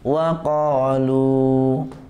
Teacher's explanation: Kalau dibaca waqaf, di lafaz waqalu, maka lu-nya dibaca panjang, karena alif lamnya yang depan itu Bapak tidak baca, ya, Bapak tidak baca.